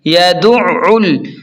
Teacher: عین کو حلق سے صاف نکالیں